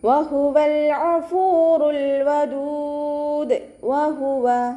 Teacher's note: വഹുവ വാവ് ഉച്ചരിക്കുമ്പോൾ ചുണ്ടുകൾ ഒന്ന് സർക്കിൾ ചെയ്ത് കൊടുക്കുക. ഹാഇൻ്റെ മഖ്റജ് അക്സൽ ഹൽക്കാണ്, സൗണ്ടിനെ വ്യക്തമാക്കി കൊടുക്കുക കേട്ടോ.